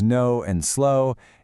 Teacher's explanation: In the words no and slow, it makes that gliding o sound.